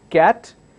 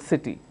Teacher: One starts with the k sound, cat, the other one starts with a s sound, city.